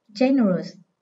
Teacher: Âm thứ hai chứa ơ, nên trọng âm rơi âm số 1.